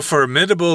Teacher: the strong uh syllable is on the first syllable